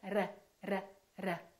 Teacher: That's called a rolling R. That sounds like a foreign accent to American speakers.